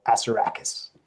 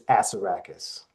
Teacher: the correct pronunciation out of my mouth is emphasis on the first syllable